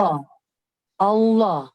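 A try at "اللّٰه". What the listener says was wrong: Ya, masih sedikit ada huruf wawunya. Jadi lidahnya langsung nempel di langit-langit bagian atas.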